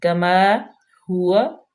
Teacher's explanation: کیونکہ الف ساکن ما قبل مفتوح آ گیا ہے، تو یہ الف مدہ ہو جائے گی، اور الف مدہ کو ہم کھینچ کے پڑھتے ہیں، لمبا کرتے ہیں۔ کما ہوا، ہاں انتہائی حلق سے، واو ہونٹوں کی گولائی سے